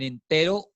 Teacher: en entero la N toca la parte alta detrás de los dientes